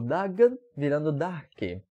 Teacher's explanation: O dagan virando darke, né? Perdeu o vozeamento do D.